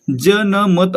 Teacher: ज चा उच्चार य जोडल्यासारखा करतो म्हणून या ठिकाणी तालव्य हे आपलं उत्तर असणार आहे.